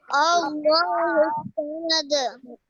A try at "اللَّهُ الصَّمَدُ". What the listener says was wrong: समद नहीं स्वमद स्वाद को मोटा पढ़ें स्वमद लम यलिद